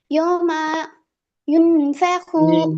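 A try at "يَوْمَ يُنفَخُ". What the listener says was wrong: یوما غلط میم پر زبر ہے زبر کو کھینچنا نہیں ہے یوم ینفخ ینفخ خا کا پیش نہیں کھینچنا ہے زبر زیر پیش کو کھینچنا نہیں ہے یوم ینفخ پوری ینفخو نہیں ینفخ بس ینفخ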